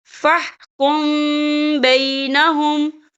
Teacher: فَإِن جَاءُوكَ فَاحْكُم بَيْنَهُمْ، یہاں دیکھیں فَاحْكُم، یہاں میم ساکن ہے، میم ساکن کے بعد جو ہے با آ رہا ہے، تو یہاں پر اکفا شفی ہوگا اور ہم یہاں غنہ بھی کریں گے